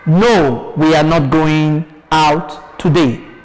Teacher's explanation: You see, a statement. It has to end with a falling tone.